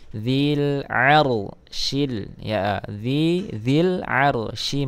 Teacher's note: lam qamariah berarti Alif lamnya jelas dilar Nah di sini ada Ro berharakat sukun Tapi sebelumnya berharakat fathah maka dibaca tafkhim